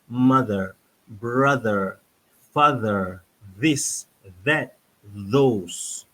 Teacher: So, pastikan kalau anda boleh ada cermin depan wajah anda sebut perkataan seperti yang kami tunjukkan tadi, lidah di hujung. Hujung lidah itu keluar sedikit di hadapan gigi